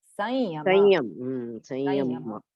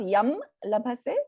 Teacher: In the case of the ya, in the case of the va, and in the case of the la, the anuswara takes on a nasal sound of the ya, nasal sound of la, nasal sound of va.